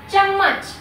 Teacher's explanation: तो चम्मच बोलने में डबल म का उच्चारण हो रहा है, तो च आधा म पूरा म और च, क्या हो गया चम्मच।